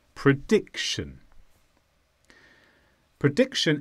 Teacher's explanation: this is a noun and the stress is on dic.